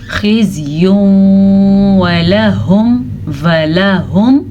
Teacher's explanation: تنوین کے بعد یمون میں سے واو آیا ہوا ہے تو ادغام بالغنہ کرنا ہے